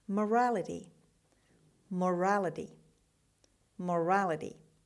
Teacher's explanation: The stress is on the second syllable, on R. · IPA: /məˈræləti/